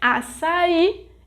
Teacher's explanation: açaí is a oxítona because its sílaba tônica is I, the final syllable